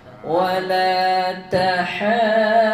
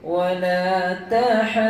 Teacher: Dia ada sedikit henjutan pada haddu. Kalau kita baca straight je, wala tahaddu, kurang tepat.